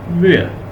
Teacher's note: आर के बाद जब कोई वावल साउंड ना आए तो वो प्रोड्यूस ही नहीं होता, हम उसे बोलते नहीं, वो साइलेंट होता है। वेयर, बस।